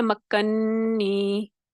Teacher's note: اس میں بھی ہم نے کیا کیا، پھر پہلے نون کی حرکت کو ختم کیا اور پھر دوسرے نون میں داخل کیا، اور جو ادغام ہوا تو اسی طریقے سے پھر یہ ادغام کبیر ہے، مکنی یہ والی، پھر آواز ہوگی، نون مشدد ہوگا اور غنہ ہوگا